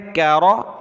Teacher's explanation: باریک کاف ہے اور را کو موٹا کرنا ہے ، کرا، میم الف زبر ما، کرما، دال زیر دی، کرمادی،